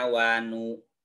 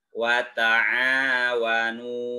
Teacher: ini dinamakan dengan madpop by atau mad asli dibacanya panjang panjangnya dua ketukan